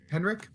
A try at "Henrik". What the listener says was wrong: No, he got it wrong. There's no D in the name.